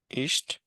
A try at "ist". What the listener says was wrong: या इश्त नहीं, फिर इस्त, इसको को हटा दें।